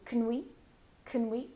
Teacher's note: you're going to really reduce the first two words